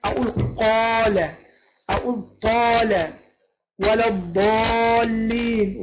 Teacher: يبقى الحرف مفخم، يبقى فيه سمن، يبقى زي ما يكون مثلا واحد تخين واحد رفيع، يبقى التفخيم عامل زي ايه الواحد التخين، انما التنحيف او الترقيق عامل زي ما يكون واحد ايه نحيف او رفيع.